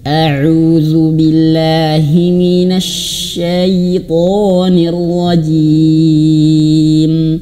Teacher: Huruf syin itu dia memiliki sifat hammas dan tafsyi. Mengalir nafasnya dan napasnya bertebaran di dalam mulut. As ingat huruf syin dia itu tarkik, dia tipis.